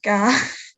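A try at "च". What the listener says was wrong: No, it's a cha. Yeah, in the just because of the system of transliteration we use, it's just a convention. That the C is used to represent the ch sound. and the K is used to represent the k. So cha.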